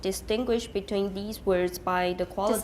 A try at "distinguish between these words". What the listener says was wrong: These 不要重. Almost all of you stress the word these, and you should not, usually.